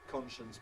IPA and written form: ˈkɒnʃəns (conscience)